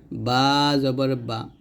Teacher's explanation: বা টা আমরা দুই ঠোঁটে মিল করে উচ্চারণ করব